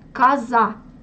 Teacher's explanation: je prononce A à la place de O parce que c'est une syllabe atone